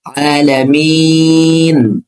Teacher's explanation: প্রত্যেকটা আয়াতের শেষে কিন্তু রিডিং পড়ার সময় ৩ আলিফ করে টান হয়েছে। যেমন আলামিন, এখানে মিমে আমার সময় ৩ আলিফ টান হয়েছে, কিন্তু বানানোর সময় ১ আলিফ হয়েছে।